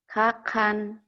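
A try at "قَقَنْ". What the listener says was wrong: Kakan, bukan hakan. Kakan. Kakan.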